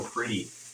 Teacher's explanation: It's like hard D's and hard T's. There's words where the T is pronounced as a D in a sense, like pretty